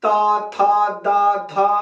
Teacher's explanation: दांत पे बार बार जीभ जाके मार रही है